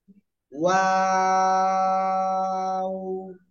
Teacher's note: এই যে ওয়াও অক্ষরে কিন্তু তিন আলিফ টান